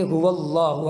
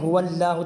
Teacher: لفظ اللہ یعنی اللہ کے نام سے پہلے واو کے اوپر زبر ہے تو اس کو موٹا پڑھیں گے هو اللہ، اگر اس کو ہم باریک پڑھیں هو اللہ تو یہ غلط ہو جائے گا۔